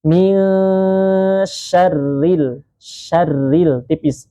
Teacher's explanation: Syarri di situ huruf ro yang bertasydid berharakat kasrah. Maka huruf ro yang berharakat kasrah maka ia ee tarqik dia tipis.